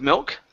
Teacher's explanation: bit better with milk okay yeah just remember with the I your tongue has to raise up and touch your teeth